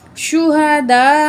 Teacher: تو یہ دیکھیں مد کے بعد حمزہ اسی لفظ کے اندر آ رہی ہے، ٹھیک ہے. تو اس مد کو ہم 5 الف کے برابر کھینچ کے پڑھیں گے